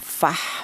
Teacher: Jelas bahwa huruf ha ini keluarnya berasal dari tengah tenggorokan. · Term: izhar halqi